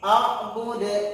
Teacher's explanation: Karena ini adalah terakhir ayat, maka dia dikolkolakan.